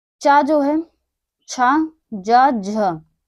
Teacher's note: तालब, तालब या तालु। चा जो है, छा, जा, झ, ये 4 हमारे जो हैं वो तालु से उच्चारित होते हैं।